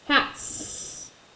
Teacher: T is unvoiced so what is our s gonna say it's unvoiced